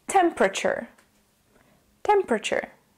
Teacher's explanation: the T and U together are pronounced as a CH sound · have to kind of shorten everything we end up saying temperature in the second syllable we drop the e completely and we add awah temperature the T and U together are